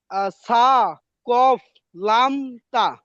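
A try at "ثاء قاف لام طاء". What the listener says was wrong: হ্যাঁ, যাক, সুন্দর।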